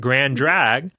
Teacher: if you don't pause for your glottal stop, you kind of drag those two words together and make it grand drag